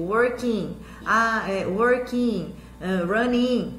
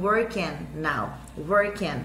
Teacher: Ele é um i mais aberto um pouquinho, tá? Esse som do i.